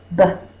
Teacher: The first sound is b. My lips are closed. The line comes first, and then the bubble.